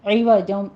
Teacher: عین وسط حلق سے نکالتے ہوئے، عوجوں، اس کو ایوا نہیں کرنا، حمزہ نہیں پڑھنا، عوجوں، جوں میں تنوین ہے، یہاں پہ ادغام الغنہ کریں گے، 2 کاؤنٹ کرنا ہے۔